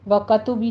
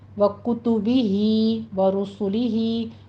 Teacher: وَكُتُبِهِ وَرُسُلِهِ دونوں ہونٹ گول کر کے ادا کیجئے، اس کو را مفخم پڑھی جائے گی، اور ہی میں دونوں جگہ پہ مد صلہ صغرا ہو رہی ہے، 2 کاؤنٹ کرنا ہے۔